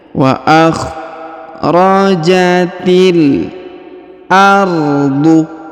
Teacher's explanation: Huruf T langsung sambung ke huruf lam ya, yang berharokat sukun.